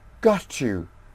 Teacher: T plus y give ch sound